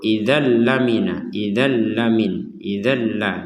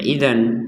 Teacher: tanwin bertemu lam kita baca dengan idgham bila gunnah